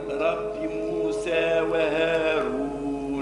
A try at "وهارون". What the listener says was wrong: وهارون رو رو مش وهارون هارون لا هارون رو رو الرام فخمة هكا صوتها هارون رو رو